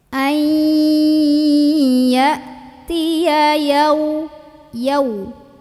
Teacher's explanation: hamzah sukun bunyinya ketahan, punya sifat namanya syiddah.